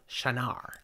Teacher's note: And the shy, you said, that's correct, but the emphasis is on the second syllable